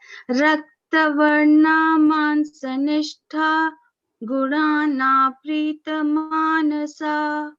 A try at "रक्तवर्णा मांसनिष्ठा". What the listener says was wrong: Good, ma.